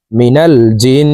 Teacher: থেকে গুনা করিয়া পড়িতে হয় তাই এই জিম তাসদিদলা নুনের সাথে তিন সেকেন্ড পরিমাণ গুন্নাহ করে ধরে রাখব